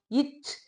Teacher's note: எழுத்தோட சத்தம் வருதுன்னு பாருங்க இச் இங்கு இவ்விரு மெய்களும் இடை நான் அதாவது நடு நாக்கு நடு அன்னத்தை தொடும்